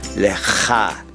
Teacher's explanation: there's a little guttural sound at the end